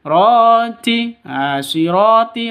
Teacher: ro panjang dua ketukan karena ada alif ini alif diawali dengan fathah mad asli atau mad thobi'i diawali dengan fathah atau alif sebelumnya berharakat fat fathah.